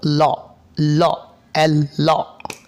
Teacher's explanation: The air flow passes at both sides of the tongue, tongue জিহবার উভয় পাশ দিয়ে, এই আমাদের জিহবার উভয় পাশ দিয়ে এয়ার স্ট্রিম চলে যাবে, বের হবে, জিহ্বার উভয় পাশ দিয়ে বাতাস বের হয়ে এই সাউন্ডটি উচ্চারিত হবে। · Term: লাদারেল কনসোনেন্ট সাউন্ড